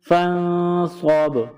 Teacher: جب قرآن پاک میں اس لفظ پر رکیں گے، وقف کریں گے، وقفاً فانصب، قلقلہ کریں گے با پر